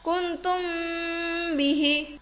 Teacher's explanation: bertemu dengan huruf ba dalam satu kalimat maka cara membacanya yaitu harus disuarakan samar-samar di bibir dan didengungkan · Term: Ikhfa Syafawi, ifa syafawi